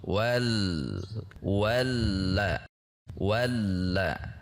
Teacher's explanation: Wal jenis tekanan tergantung dari sifat hurufnya. Di mana huruf lam sifatnya bainiah sehingga tekanan tidak konstan. Tidak wal tetapi wal turun.